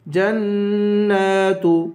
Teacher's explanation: نون پر غنہ کریں گے نون کو ایک الف کے برابر کھینچ کر پڑھیں گے